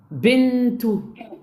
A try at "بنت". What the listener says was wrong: Pourquoi tu t'arrêtes par damma à la fin? Il y en a deux.